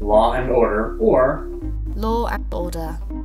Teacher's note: Moreover, in the Oceanic countries, they insert R between endings and beginnings with the vowels, respectively. This is like the linking R, but where none previously existed, such as in law and order